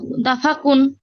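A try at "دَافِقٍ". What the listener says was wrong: আপু এখানে জবর আছে কফের উপরে।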